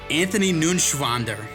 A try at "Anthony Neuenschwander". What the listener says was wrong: You didn't pronounce it right. It's N-E-U-E-N. It's Neuenschwander. Anthony Neuenschwander.